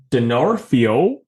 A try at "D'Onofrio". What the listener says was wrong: I think it's D'Onofrio. I don't think there's the R in there.